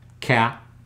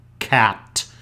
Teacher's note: you can feel the tongue touching the back of your mouth, cat. You can see that it's not your lips that are doing the work, it's the back of your tongue.